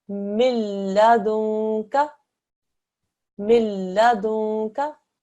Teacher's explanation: You make absolutely no nasal sound. You don't make any sort of ghunna sound. You don't press down on the noon at all.